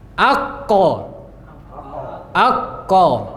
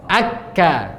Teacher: Pangkal lidah bertemu langit-langit belakang agak ke depan sedikit dari makhraj kof. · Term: kaf